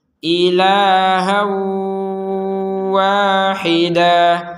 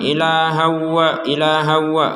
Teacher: Wahida ha jadi dengung dulu ha dengung baru wa ha ha dengungnya ini harus kerasa ya ya harus kerasa di rongga hidung kita · kita akan memasukkan tanwin ke wau disertai dengungan seperti barusan itu yaitu ketika kita menggabungkan kata ilahau dengan Wahidah